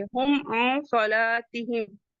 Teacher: لام کے بعد کا الف مدہ ہے، اسے ٹو کاؤنٹ پڑھیں گے، اور تا کو جلدی سے پڑھیں گے